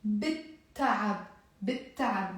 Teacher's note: The L here won't be pronounced, and because there is the B here, I'm immediately going from the B to the T.